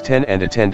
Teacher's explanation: The slash T slash sound in the words ten and attend are aspirated or produced with an accompanying puff of air.